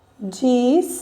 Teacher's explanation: nesta palavrinha, a sílaba mais forte é o Rá